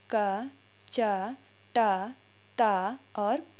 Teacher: तो का वर्ग का से, कंठ से, चा वर्ग का तालु से, टा वर्ग का मूर्धा से, और ता वर्ग का दंत से, और पा वर्ग का होष्ठ से। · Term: उच्चारण स्थान